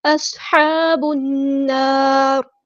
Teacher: صاد ہمارا heavy letter ہے، پورا ادا کریں گے، صاد میں سیٹی لے کر آئیں گے